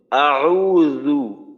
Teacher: আচ্ছা, এই যে জাল আছে না, আউযু, এই জালটাকে কিন্তু একটু নরম ভাবে বলতে হবে। আউযু, জিহ্বার আগা সামনের উপরের দুই দাঁতের আগার সঙ্গে লাগাইয়া।